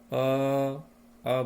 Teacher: मुख के निचले हिस्से में जो कंठ है उसी पर इसका जोर पड़ रहा है, अर्थात वहीं से इसका उच्चारण हो रहा है और इसलिए इसे हम कंठ वर्ण कहेंगे।